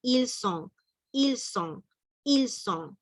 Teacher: Una sola S pronunciamos, una sola.